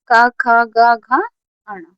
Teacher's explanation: का वर्ग कहाँ से बोला जाता है? कंठीय से।